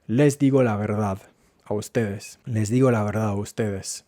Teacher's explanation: es muy típico en Chile que la D se pierda cuando se encuentra entre vocales